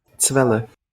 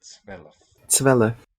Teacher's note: Zwelf with that epenthetic vowel